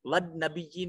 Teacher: वद नबीयीन में नून मुशद्दद है, गुन्ना वाजिब होगा